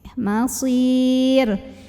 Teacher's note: Karena huruf sebelumnya ya sukun, maka otomatis ro-nya tipis. Jadi masir tipis, tidak perlu mengangkat pangkal lidah kita.